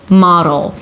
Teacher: it's a D that shifts immediately to the L. Model. Make it a light D.